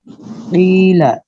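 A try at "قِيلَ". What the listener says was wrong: لام کے اوپر زبر کی آواز آدھا الف ہو گئی. قیلا بولیے, قیلا نہیں کہنا, ٹھیک ہے نا.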